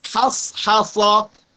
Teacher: berhati-hatilah terhadap huruf ha, jangan sampai tebal, jangan sampai dibaca tafkhim.